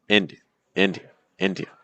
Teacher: Notice that the second and third syllable go lower in pitch and they're very soft. You can almost like whisper them. · Notice how the stress pattern completely changes the experience of the word. We want to make sure that in words like this, we're stressing the first syllable. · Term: first syllable stress